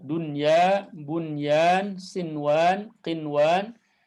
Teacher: kalimat dunya, bunyan, sinwan, qinwan ya di dalam Al-Qur'an itu tidak dibaca idgham tapi dibacanya izhar. Istilahkannya dengan izharur riwayah.